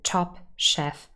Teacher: top chef both will be stressed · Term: sentence stress